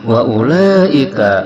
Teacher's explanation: Wa ulaika, ada mad bertemu hamzah 1 kalimah dalam isim isyarah ini, maka hukumnya adalah mad wajib muttasil yang panjangnya 5 harakat